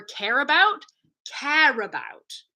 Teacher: I'm pushing that R to the next syllable and I don't need to make the wave anymore